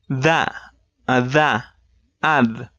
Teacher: Now let's take that and add vibration on the vocal cords to voice it